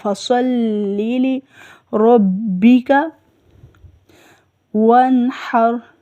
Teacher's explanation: اس کو ادا کرتے ہوئے منہ بھر کے صاد ادا ہوتا ہے